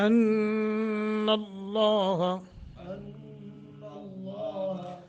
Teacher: موٹا کرنا ہے، ان اللہ نون مشدد ہے، غنہ کریں گے، لفظ اللہ کو منہ بھر کر پڑھیں گے تفخیم کر کے